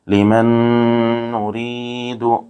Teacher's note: یہاں نون ساکن کے بعد حروف یرملون میں سے دوسرے کلمے میں نون آ رہا ہے اس لیے یہاں ادغام مع الغنہ ہوگا، غنہ کے ساتھ ملا کر پڑھیں گے۔ جس طرح پر تشدید ہو اس کو پچھلے والے حرف سے ملا کر پڑھتے ہیں، ایک مرتبہ اس کو خود ادا کرتے ہیں۔